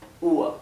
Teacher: no se pronuncia UR, sino que se pronuncia UA. ¿Bien? UA, como si fuera una U y una A, y la R es casi imperceptible